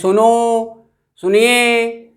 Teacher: जो ओ में अधिक जोर पड़ रहा है तो वह वस्तुतः प्लुत का ही द्योतक है।